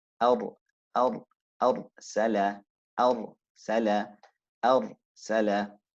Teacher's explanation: the ra leans to the under edge of the tongue and leans slightly toward the makhraj of the lam. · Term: inclination